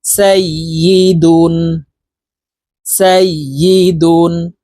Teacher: তানবিনের উচ্চারণ নুন যুক্তভাবে তাড়াতাড়ি করিয়া পড়িতে হয়